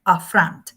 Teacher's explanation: the accent is in the second syllable